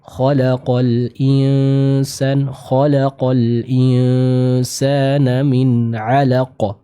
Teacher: terbaca dengan suara yang keluar dari hidung ketika kita membacakan hukum ikhfa